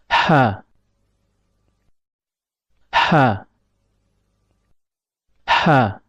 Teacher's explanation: Huruf H keluar dari tengah tenggorokan. Perlu diperhatikan bahwasanya tatkala mengucapkan huruf H, epiglotis agak sedikit mundur ke belakang. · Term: huruf ha